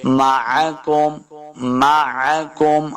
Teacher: عین کو تلفظ کے ساتھ پڑھنا ہے، بغیر کھینچے ہوئے پڑھیں گے.